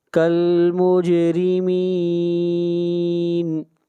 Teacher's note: جیم کے اوپر قلقلہ کریں گے